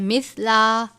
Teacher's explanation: سا کو بھی ذال کی طرح نرمی سے پڑھتے ہیں، سا کی آواز سین سے مختلف ہونی چاہیے، یعنی مثلا نہیں پڑھنا، سا نرمی سے پڑھتے ہیں۔